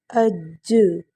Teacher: حروف قلقلہ ہے اس لیے ہم اس پر زیادہ شدت کے ساتھ اور وقف کی صورت میں جھٹکا بھی دیں گے